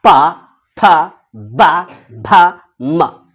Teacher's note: और पफ ब जो है ये ओष्ठ से होता है, बिना ओष्ठ सटाए हुए पफ ब पढ़ दोगे तो पढ़ दो, प पढ़ना है, ओठ को नहीं, ये दोनों ओठ नहीं सटना चाहिए।